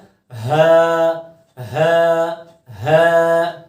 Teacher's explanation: اب یہ بھی ہا ہے لیکن اس کا مخرج جیسا کہ بتایا تھا حروف حلقی میں کہ ہا کا جو مخرج ہے وہ حلق کے آخری حصے یعنی کہ سینے کی جانب سے پڑھا جاتا ہے، سینے کی طرف سے پڑھا جاتا ہے، اور اس کو پڑھتے ہوئے آواز تھوڑی بھاری ہو کے نکلتی ہے، ٹھیک ہے، کس طرح ہا ہا ہا، ٹھیک ہے۔